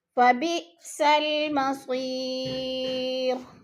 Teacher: جیسے يصلونها، اور ہاں پہ الف مدہ ہے. مصیر یا ساکن سے پہلے صاد کے نیچے زیر ہے تو یا مدہ کو بھی ہم نے ایک الف 2 حرکات کے برابر لمبا کر کے پڑھنا ہے